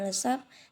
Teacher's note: Sedangkan P yang berada pada tengah-tengah yaitu tapi dan sapi, ataupun P yang berada pada posisi akhir yaitu asap ataupun lesap tidak diucapkan dengan letupan ataupun involusif.